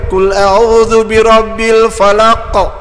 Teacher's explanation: qaf qalqalah, mesti bunyi lantunan, detakkan. Kalau dia baris mati, sukun.